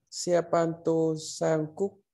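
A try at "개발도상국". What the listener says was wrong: Kê kê kê kê. Không phải xe mà là kê. Tô sang.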